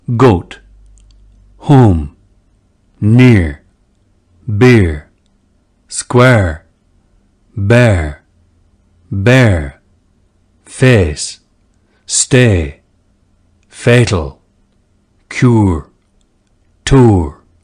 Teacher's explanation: Now, with the goat, near, square, face, and cure sets. These vowels, diphthongs, or two-stage vowels in RP or received pronunciation, and General American, were more monophthongal in early modern English.